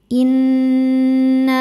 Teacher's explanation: Innahum inna nunnya dihukumi dhunah musyaddadah karena nun bertasydid. Cara bacanya berdengung. Tahan dengungannya kurang lebih dua harakat. Innahum hum ada hukum izhar syafawi. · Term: gunnah musyaddadah